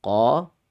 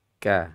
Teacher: Qo adalah bagian sisi lidah yang paling dalam. Qo ke depan sedikit ada huruf K.